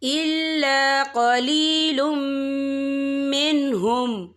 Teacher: من دیارکم ما فعلوه الا قلیل منہم، یہاں دیکھیں الا قلیل، یہاں لام کے پر تنوین ہے، تنوین کے بعد جو ہے میم آ رہا ہے، میم جو ہے حروف یرملون میں سے ہے، تو یہاں پر ادغام ہوگا، تو ہم اسے غنے کے ساتھ پڑھیں گے